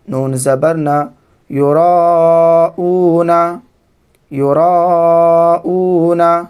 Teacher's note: یہاں پر حرف مد کے بعد حمزہ اسی کلمہ میں مد متصل ہے